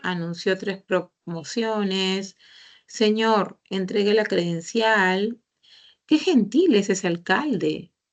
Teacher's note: el tono desciende termina hacia abajo